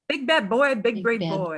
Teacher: B in English, if you put your hand in front of your face and say, big brave boy, big bad boy, you're going to feel a puff of air